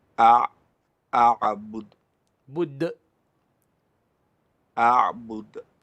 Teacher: the dal we don't let air escape. Instead, we make a sound. So a'bud, bud, not bud with the air. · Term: qalqala